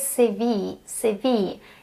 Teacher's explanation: The stress is on the second word, CV.